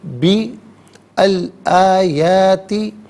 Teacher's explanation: درمیان میں سے الف یعنی حمزہ کو حذف کیا جائے گا